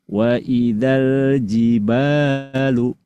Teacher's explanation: huruf madnya itu dibuang, tidak diucapkan, tidak dilafalkan, sehingga bunyi yang dihasilkan itu berubah jadi pendek. Wa idzal jibalu, bukan wa idzal jibalu, enggak bunyi panjang sekarang, berubah jadi pendek.